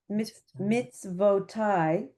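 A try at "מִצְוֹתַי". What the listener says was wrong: It's avo, no tie.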